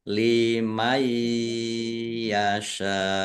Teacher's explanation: Ya, masuk dengan mendengung. Mendengung ya ditahan biar tampak mendengungnya. Sin fathah alif mad thobi'i. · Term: Idghham bighunah